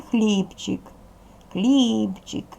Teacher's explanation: у слові хлібчик хлібчик наголошений перший склад